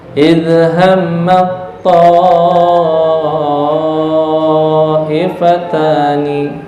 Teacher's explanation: Idhammat ta, taknya enggak usah dibaca, langsung ke to. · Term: idgham mutajanisin